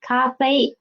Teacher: we can see the first tones are on the highest pitch